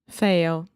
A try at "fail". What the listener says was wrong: When you were reading, I was really hearing fail, and it almost sounded like you were saying like fail, like ele fail. So the important thing here is the final L sound. So when you say fail, what you're doing is making too much of a circle with your mouth at the end. So try to relax your lips.